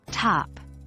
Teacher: T like the T in top pronounced with the tongue against the upper teeth